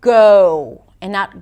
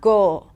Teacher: adding a little W at the end for the O as in go